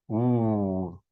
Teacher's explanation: So just like for the vowel oo, we have the same position for the consonant oo, the W. And so this is called a labio-velar glide because it's said at the lips, labio, and velar at the velum.